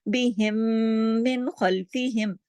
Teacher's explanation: बिहिम में मीम साकिन के बाद मीम मुशद्दद है, यहाँ पे इदगाम शफवी हो रहा है और गुन्ना अकमल हो रहा है, क्योंकि मीम साकिन के बाद मीम मुशद्दद है।